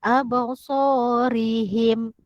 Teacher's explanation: ro ini dibaca tarkik ataupun dibaca nipis